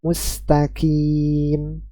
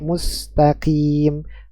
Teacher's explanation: mustaqim yang seharusnya dibaca dengan huruf q malah dibaca dengan huruf ka